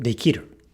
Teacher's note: the ki is voiced here because it is preceding a voiced consonant